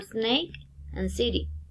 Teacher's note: the tongue comes into contact with the alveoli, articulation place, alveolar, and is fricative.